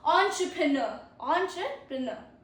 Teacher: Stress on the last, NER.